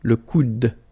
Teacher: you don't insist on this final e, it only gives you the sound of d at the end